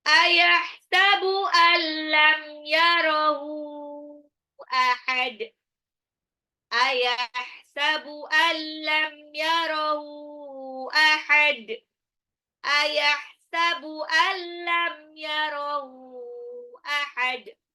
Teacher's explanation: nun sukun langsung lebur ke lam ya. Jadi nggak usah ditahan. Alam gitu aja, bukan alam, tapi langsung aja alam. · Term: idgham bila gunnah